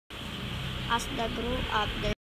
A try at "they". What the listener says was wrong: she mispronounced the word "they" as "the."